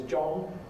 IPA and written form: ʤɒŋ (John)